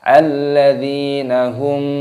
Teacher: hukumnya dibaca izhar syafawi dibaca jelas tidak boleh dibaca berdengung